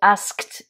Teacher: verbe to ask demander conjugué au prétérite il est régulier donc à l'écrire on met juste Ed et ce d on va le prononcer t